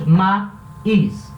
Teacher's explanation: Aqui eu tenho um encontro de duas vogais, mas quando eu separo a sílaba, essas vogais ficam em sílabas separadas. Maíz. Então é um hiato.